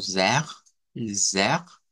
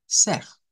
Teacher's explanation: puede ser la R uvular como zer, zer, o con la H aspirada como J, ser. Esta siempre es un poco más fuerte, esta de acá.